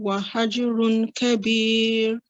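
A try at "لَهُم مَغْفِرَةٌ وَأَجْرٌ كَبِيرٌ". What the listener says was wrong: Okay, so on this tanween, we're on letter ta. You don't need to pronounce tun and then wa. You need to join this ta with this wow. So it'll be tumwa with a nasal sound. Tumwa.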